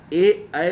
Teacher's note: जिन वर्णों के उच्चारण में वायु कंठ और तालु दोनों को छू के निकल जाए, उसे कंठ तालव्य कहते हैं। ऐ जो है वह कंठ तालव्य वर्ण है।